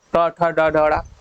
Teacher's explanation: जीभ ऐंठ रही है, मूर्धा बना रही है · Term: मूर्धन्य